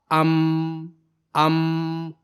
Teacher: मखरज दोनों होठ और खशुम यानी नाक है। यानी दोनों होठों के सूखे हिस्से को मिलाने से हरफ मीम की आवाज पैदा होती है।